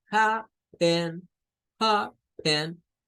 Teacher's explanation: esa E es un schwa